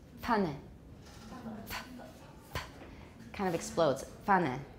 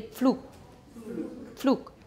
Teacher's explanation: It's a bilabial stop released into a labiodental fricative.